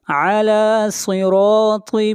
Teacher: علی صراط، صاد کو موٹا پڑھیں گے، صاد حروف مستعلیہ میں سے ہے، اور را کو موٹا پڑھیں گے، را کے اوپر زبر ہے. طا بھی حروف مستعلیہ میں سے ہے، طا کو موٹا پڑھا جائے گا.